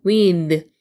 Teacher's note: 아랫입 윗입 사이에 혀를 내미고 드 발음인데 혀 내미면서 하셔야 돼요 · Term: th 돼지꼬리 발음